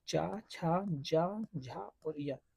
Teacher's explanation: चा जो है वो तालव्य व्यंजन है, तालु से इसका उच्चारण होता है।